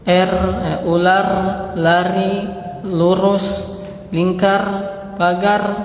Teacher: Kalau R-nya orang Indonesia banyak takrirnya.